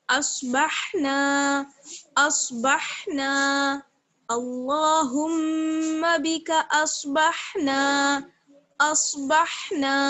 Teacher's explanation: اصبح نون الف زبر نا، نون میں الف مدہ ہے، ایک الف کے برابر اس کو کھینچنا ہے